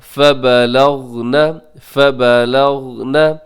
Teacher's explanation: یہاں غین کو قلقلہ ہونے سے بچائیے گا۔ لغنا ایسے غین ہلنے کا اندیشہ ہوتا ہے تو آپ خیال رکھیے گا۔